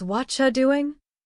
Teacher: the what and you link together and the are often disappears. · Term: connected speech